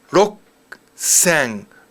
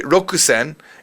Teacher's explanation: The ku is there, it's very silent though. You really wouldn't say rokusen, it's more like roksen.